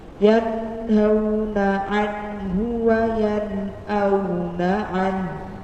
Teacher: Jadi bukan anhu tapi wa yanauna anhu. Jadi nunnya mati, kemudian ada hembusan dari huruf haknya. Karena hak itu makhrajnya adalah pada tenggorokan, kemudian menghembuskan nafas.